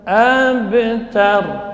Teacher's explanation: Ra huruf takrir, getarannya maksimal 2 getaran.